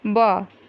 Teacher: ब दोनों लिप पे, लिप जो है हमारा, ओष्ठ जो है हमारा वो बंद हो जा रहा है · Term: ओष्ठ ध्वनि